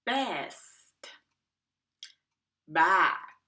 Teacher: b is voiced so activate your vocal chords